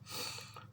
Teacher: उसके उच्चारण में जीवा दांतों का स्पर्श करती है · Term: दंतीय